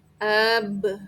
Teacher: Ba kita menyebutkan dengan keadaan mulut yang membuka, dari tutup terbuka ya.